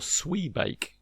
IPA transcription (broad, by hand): swi:beɪk